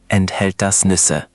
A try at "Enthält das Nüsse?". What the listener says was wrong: That was clear, but soften the U sound a bit. Nüsse. It's like the U in moon, but with your lips more rounded. Nüsse.